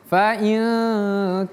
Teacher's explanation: Jadi bacanya bukan fa in kana, tapi antara in dengan ka itu samar-samar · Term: ikhfa